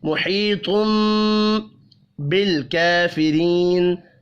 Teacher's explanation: और जब तनवीन मीम के साथ मिलेगा तो गुन्ना होगा